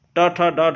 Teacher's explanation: इन सबका उच्चारण स्थान मूर्धा होता है